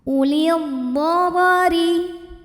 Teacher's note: Huruf ra dibunyikan secara tarqiq sebab ra berbaris kasrah, maka huruf ra bacanya tipis, ringan.